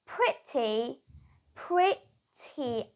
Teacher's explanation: I would pronounce the r because now I have the E sounds coming after R sound so it's pretty pretty very very now I have the e